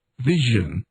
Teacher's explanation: The voiced palatal fricative